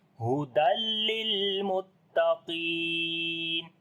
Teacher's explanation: Qaf we read in heavy sound, and also we long due to ya madda. So we say hudal lil muttaqin. · we connect dal with the lam. And here we make idgham without ghunna.